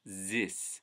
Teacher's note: The voice TH for an especially thick accent turns into a z